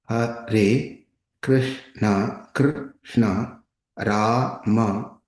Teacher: The tongue is slightly bent backwards and vibrates at the topmost part of the palate. The letter R in Krishna, although a vowel, is uttered in the same way, more clearly.